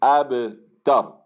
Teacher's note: با کے اندر قلقلہ ہوگا، آواز آپ کی آگے قلقلہ محسوس ہونا چاہیے